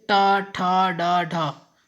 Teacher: जब हम टा, ठा, डा बोलते हैं तो हमारी जीभ का जो अगला हिस्सा है वो क्या होता है, फोल्ड होता है, घूम जाता है, ये मुड़ जाता है, और जीभ के मुड़ने से ही टा, ठा, डा, ढा ये वर्ण बनते हैं, हमारे मुंह से निकलते हैं। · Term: मूर्धन्य